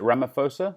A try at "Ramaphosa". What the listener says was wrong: Yes, state president, but yes, Ramaphosa, you don't pronounce the H.